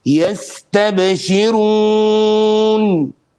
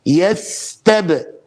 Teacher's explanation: Notice the seen longer than the ba.